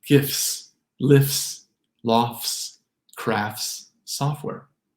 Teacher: You'll hear these combinations draw out the S.